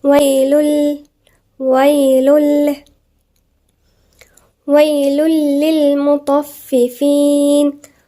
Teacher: ما جه التنوين وبعديها اللام يبقى ادغام بغير غنة. ما فيش غنة. · اللام. فهتبقى لام. هتبقى حاجة واحدة مشددة.